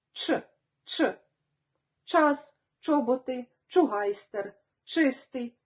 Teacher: кінчик язика потрібно поставити на початок твердого піднебіння губи при цьому заокруглюються і випиляються наперед утворюючи квадрат ч час чоботи чугайстер чистий чи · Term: український ч